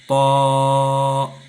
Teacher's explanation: طا بھی جو ہے حروف مستعلیہ میں سے ہے، اور اس کو بھی خوب موٹا پڑھیں گے